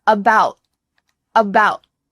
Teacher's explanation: That final T gets cut short. Your tongue is at the top of your mouth, but there's no air going through.